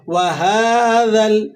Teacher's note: وَهَذَا، ہا پہ کھڑا زبر ہے، کھڑا زبر کو آپ ایک الف تک کھینچ کر ادا کریں گے، 2 سیکنڈ تک کھینچ لیں گے۔